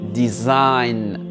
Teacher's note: Le G n'est pas prononcé. On va directement à la lettre N.